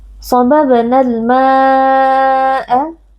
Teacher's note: Mad wajib muttasil karena ada mad tabi'i yang bertemu dengan hamzah di dalam satu kata, kita baca panjang 4 atau 5 harokat.